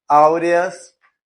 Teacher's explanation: Então nós percebemos aqui que o A é mais forte, então ele é crescente.